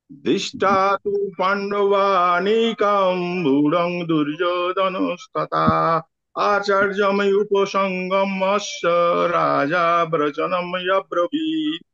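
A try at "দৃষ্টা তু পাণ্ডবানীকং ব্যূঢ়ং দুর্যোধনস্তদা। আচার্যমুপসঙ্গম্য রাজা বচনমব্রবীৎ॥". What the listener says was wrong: আচ্ছা, এখানে যেখানে কমা দেয়া আছে সেই পর্যন্ত গিয়ে একটু হালকা করে থামতে হবে। আপনি উচ্চারণ ঠিক হচ্ছে, শুধু আপনাকে যেখানে গিয়ে আপনার কমাটা দেওয়া আছে সেইখানে গিয়ে হালকা করে থামতে হবে। দৃষ্টাতু পাণ্ডবানিকম ঊর্ধ্বম দুর্যোধনস্তদা আচার্য উপসঙ্গম্য রাজা বচনম অব্রবীত।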